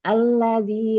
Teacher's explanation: lamnya bertasydid maka tekan tuh alladzi, lamnya satu harakat saja.